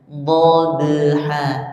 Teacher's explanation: Kemudian huruf ba-nya jangan dimatikan bunyinya, langsung beriringan dengan bunyi selanjutnya. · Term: qalqalah sughra